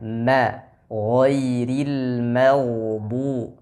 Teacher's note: huruf mim jangan ikut terbawa tebal karena huruf Gin yang tebal tadi tapi harus dijaga ketipisannya